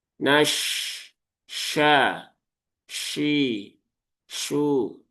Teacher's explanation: Shin dia keluar dari tengah lidah langit-langit atas. Tengah lidah langit-langit atas. Jadi pastikan rasakan tengah lidahnya itu menuju ke langit-langit atas. Tapi belum sampai nyentuh ya. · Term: huruf shin